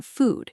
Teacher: Both involve rounded lips, but in good, your lips are only slightly rounded, and the vowel is shorter. While in food, your lips are more tightly rounded and pushed slightly forward, almost like you are making a small circle with your lips.